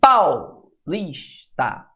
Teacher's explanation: Quando eu falo, por exemplo, paulista, o A é mais forte, por isso que o A foi a vogal e o U foi a semivogal